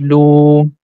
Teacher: whenever a letter has Dhamma, and if the next letter is Waw, so because of Waw, we are going to stretch the Dhamma sound for two count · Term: long sounds